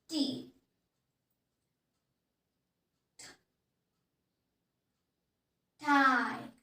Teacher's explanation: Here you can notice that you are using the tip of our tongue and then touching to the tooth, hard ridge. Then suddenly letting the air flow out of your mouth.